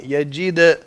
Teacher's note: قلقلہ کی آواز بہت ہلکی ہے, اس کو بڑھائیں. یجید بڑھانا ہے قلقلہ کو, قلقلہ واضح ألم ہو.